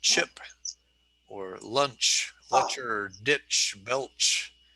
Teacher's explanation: the air is rushing over the tip of your tongue okay you're stopping the air but the tip of your tongue is on the alveolar ridge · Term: affricates